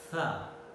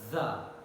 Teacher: tha is voiceless and the is voiced. Alveolar fricatives.